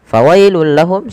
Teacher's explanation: suara tanwin yang langsung dimasukkan ke huruf lam karena ia idgham bila ghunah